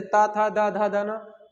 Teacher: ये बोल के देखो, आपकी जीभ क्या लगेगी? दांतों से लगेगी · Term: दंत व्यंजन